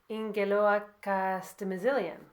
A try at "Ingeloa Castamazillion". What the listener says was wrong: okay, so the first A, the first I, and the last I are all silent. So it's actually Ingela Castamazillion. Ingela Castamazillion. yeah, basically Ingela Castamazillion.